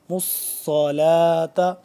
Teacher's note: صاد پہ ہی ہے، اس پہ شد ہے تو صاد مشدد ہے، اور صاد کو ہم موٹا کر کے پڑھیں گے۔ مصلاۃ، مشدد ہونے کی وجہ سے آپ کو تھوڑا سا کھچاؤ اس پہ فیل ہوگا صاد پہ